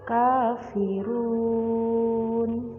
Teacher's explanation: yang wajib dibaca panjang enam harokat